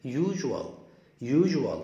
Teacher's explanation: خلي بالك الاس هنا هتنطق جه جه